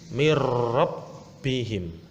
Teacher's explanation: nun sukun bertemu dengan huruf ro, jadi nunnya itu dianggap tidak ada jika dibaca. Tulisannya min rabbihim. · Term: idgham bila gunnah